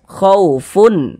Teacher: Karena dia izhar, maka dibaca jelas dan tidak berdengung.